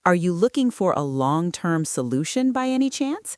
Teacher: This rising intonation, which the sources say is used for yes-no questions to confirm information, makes you sound helpful rather than aggressive.